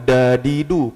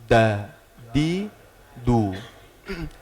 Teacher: huruf dal itu ujung lidah dengan pangkal gigi seri atas.